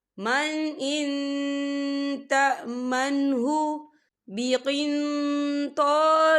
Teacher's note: نون ساکن کی آواز کو ناک میں چھپائیں گے